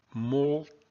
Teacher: The M drops out, and then the U elides with the I.